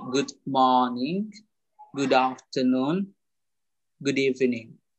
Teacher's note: tidak perlu jelas pengucapan R ya dalam bahasa Inggris. Ya, jadi boleh dikatakan bunyi R itu bunyinya malah A. Ya, jadi seperti A.